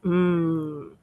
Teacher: Insales porque obvio por como dice su nombre, que es obvio, el aire sale no por la boca, sino por la nariz. Si yo pronuncio la m, el aire no sale por mi boca. Tengo la boca cerrada, de hecho, cuando pronuncio la m, hm, si tú pones tu dedo en tu nariz, a la altura de tu nariz, vas a sentir como el aire sale suavecito, pero sale por tu nariz.